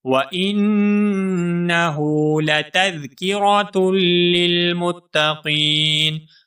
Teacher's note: متقین میں جو قاف ہے اس قاف کو ہم ایک الف کے برابر کھینچ کر پڑھیں گے کیونکہ یہاں پر یا مدہ ہے.